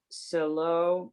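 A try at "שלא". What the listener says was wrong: It's not a ses. Shalo.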